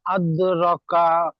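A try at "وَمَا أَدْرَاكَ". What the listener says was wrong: র টান দেন, র খাড়া জবর টান দেন।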